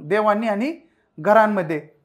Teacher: अनुस्वाराचा जो उच्चार आहे तो अस्पष्ट आणि ओझरता होतो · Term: अनुनासिक